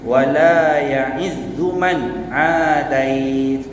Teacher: Nun mati jumpa dengan ain, hukumnya izhar. Jelas, tak ada bunyi dengung.